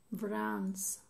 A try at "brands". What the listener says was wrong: You're saying an S, it's a Z. Brands. There are rules at the ends of the words when it's an S, when it's a Z.